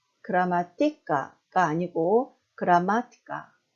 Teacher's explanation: 뒤에서 세 번째 마에 강세가 있죠